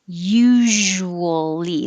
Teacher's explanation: usually again is like shh but with voicing usually so make sure you keep your lips small to make · zh again is like shh, but with voicing